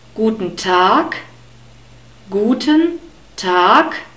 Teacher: most of the time we Germans don't speak this unstressed e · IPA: ['gu:tən ta:k 'ʃprɛçən zi: dɔytʃ]